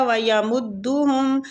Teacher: میم کو دال سے شدت کے ساتھ ملائیں گے، تشدید ہو رہی ہے